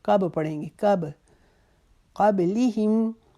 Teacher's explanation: با کے اوپر جزم ہے، اس کے اوپر کلکلا کریں گے. من قب نہیں پڑھیں گے، کب پڑھیں گے.